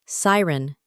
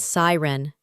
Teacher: It's siren with the emphasis on the first syllable